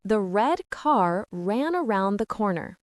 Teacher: The American R sound is strong. Your tongue curls back slightly but doesn't touch